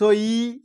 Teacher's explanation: হস্য ইটা যখন উচ্চারণ করছি, হস্য ই জীবটা সামনে থাকছে, অর্থাৎ জীবটা পিছন থেকে অনেকটা বেড়ে এসছে